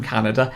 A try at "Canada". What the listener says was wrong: You just said it like calendar.